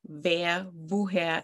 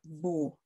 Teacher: But in German, your teeth touch your lower lip.